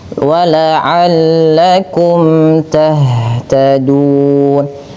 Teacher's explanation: Ha, sifat hanya mengalirkan nafasnya karena dia ada salah satu sifat hamas dan dia lembut ya. Jaroyanun nafas, mengalir suara nafas kita.